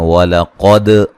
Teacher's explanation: क़ाफ को मोटा, दाल पे क़लक़ला।